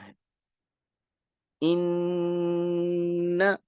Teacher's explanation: ان غنہ ہو جائے گا، نون کے اوپر شد آ گئی